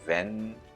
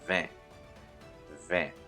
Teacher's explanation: the EN sound, which is a nasal vowel sound. So we do not say ven, we say vin, vin.